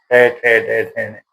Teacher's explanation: ट वर्ग मूरधा यानी कि हमारे दांतों के पीछे जो खुरदरा सा भाग है उस पर जीभ टच नहीं होगी तब तक ट वर्ग की ध्वनि का उच्चारण नहीं होगा